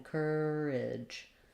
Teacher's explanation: This letter A is going to be the I sound, a reduced vowel, and then we have the j sound at the end.